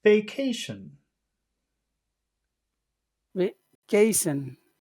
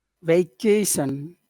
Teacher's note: you start high and then you go low